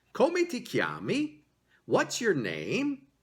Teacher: there is a rising intonation, an upward inflection on the last word of that question